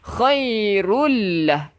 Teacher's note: Tanwin bertemu dengan lam. Memasukkan dekat lam. Dia masuk dekat lam tanpa kita dengung.